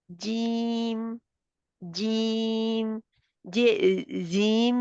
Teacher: हरफे शजरियन ये मुंह के दरमियानी हिस्से से अदा होते हैं